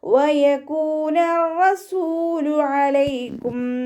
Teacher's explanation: വാവ് ഉച്ചരിക്കുന്ന സമയത്ത് ചുണ്ടുകളൊന്ന് വട്ടത്തിൽ പിടിച്ചു കൊടുക്കുക. കാഫിൻ്റെ കൂടെ വാവ് മദ് വന്നു. 2 കൗണ്ട് നീട്ടിക്കൊടുക്കുക.